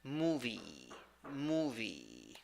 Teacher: 2 syllables. The first syllable is the stressed syllable. You have a long U there.